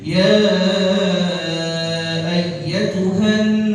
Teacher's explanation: Ya ada nun musyaddadah dibaca ghunnah.